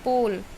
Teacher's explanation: पोल में हम पो को देर तक कहते हैं, ला को जल्दी बोलते हैं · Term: long vowel sound of O